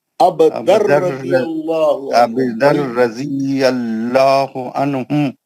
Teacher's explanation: تنوین کے بعد لام اور را یا تو نون کی آواز نہیں آتی. ادغام بلا غنہ ہے، وہ نون کا آواز آتا ہی نہیں.